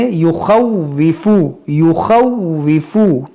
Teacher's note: واو مشدد ہے، اس کو پڑھیں گے 2 بار ، یخوفو اولیاء، یہ یہاں پر دیکھیں الف مدہ کے بعد